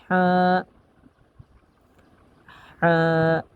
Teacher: হা, হাটা উচ্চারণ হবে 2 নাম্বার মাখরাজ হতে হলকের মধ্যখান হতে স্পষ্টভাবে